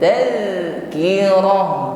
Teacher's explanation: huruf dzal sukun maka tampak sifat rakhawah di sini ya, bunyi hurufnya jalan, jarayanus saut, bunyi hurufnya mengalir, tal, tidak terputus ya, tidak boleh tertahan.